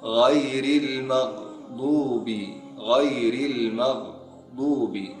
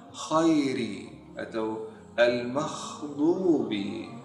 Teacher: Kesalahan yang sering muncul saat kita mengucapkan huruf gha, kita mengucapkannya dengan kha. Jadi saat banyak orang yang baca khairi atau al-makhdubi, ini kesalahan yang sering muncul dalam huruf ghain.